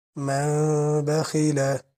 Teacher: আপনারা এখানে একটা জিনিস খেয়াল করবেন, ১ পয়সা পরিমাণ মুখে পাকা রাখবেন। মিম বলে ২ ঠোঁট একসাথে করে পড়বেন না, হালকা একটু পাকা রাখবেন যাতে একটা পয়সা পরিমাণ যাইতে পারে, আসতে পারে। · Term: ইকলাবের